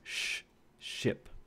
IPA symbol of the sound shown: ʃ